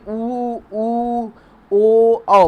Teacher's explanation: जैसे ऊ, ओ बोलिए, आप बोल के देखिए खुद, आपकी जीभ एकदम पीछे की तरफ, कंठ की तरफ बढ़ रही है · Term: पश्च स्वर